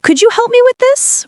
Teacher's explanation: If your voice rises slightly at the end, it sounds more like a request and less like a command. Try saying, "Could you help me with this?" with a friendly rising tone.